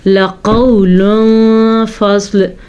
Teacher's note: قاف کو ہم نے پر کر کے پڑھنا ہے اور سواد کو بھی ہم نے پر پڑھنا ہے